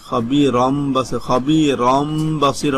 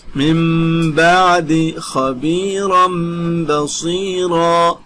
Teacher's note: এই যে এখানে আপনাকে আরো বিস্তারিত বলেছে, মিম বাদি নুন সাকিনের বামে ইখলাবের হরফ বা আসিয়াছে, অর্থাৎ নুন সাকিনকে মিম দ্বারা বদল করিয়া গুণের সাথে পড়িতে হবে